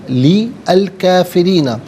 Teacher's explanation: اعتدنا جہنم لی الکافرین، لام کے نیچے زیر سے الکافرین کے لام ساکن کے ساتھ ملائیں گے، درمیان میں سے الف یعنی حمزہ کو حذف کیا جائے گا